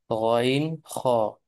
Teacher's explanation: তিন নাম্বার মাখরাজ হলকের শেষ হতে